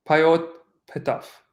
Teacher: Because papyrus was expensive, and you probably would not have a glottal stop between pe etaf. This tends to be simplified to petaf, payot petaf.